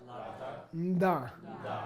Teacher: It's not only not a la, it's a D sound. It's not only not a D sound, it's a prenasal D sound.